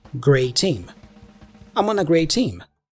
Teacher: the T for great is dropped and we only pronounce the T for team